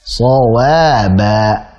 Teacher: Sad tebal, waba tipis.